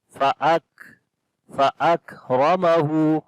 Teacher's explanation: Ra we read in heavy sound due to fatha sign on it. Ha again we long due to invert dhamma.